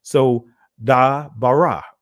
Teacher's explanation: So the accent is being placed in the middle